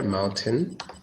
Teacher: Mountain has no T sound.